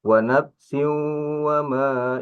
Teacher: Wanapsiu wama ini ada tanwin menghadap wau ini mad ini alif hukum nun mati bertemu dengan waw itu idgham bigunnah